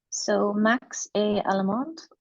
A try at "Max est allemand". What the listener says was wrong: How did you pronounce the first sentence? I'm not sure if I can hear like the D in the first. Did you pronounce a D at the end of the first sentence?